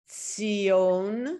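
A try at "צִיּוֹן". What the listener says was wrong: Good. Perfect.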